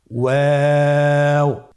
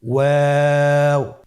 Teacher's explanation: 2 ঠোঁট গোল করে মাঝখানে ফাঁক রেখে হরফটি উচ্চারণ করতে হবে।